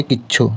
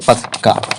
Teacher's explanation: জোর দেওয়ার জন্য শব্দের অন্তর্গত ব্যঞ্জন দ্বিত্ব উচ্চারিত হয়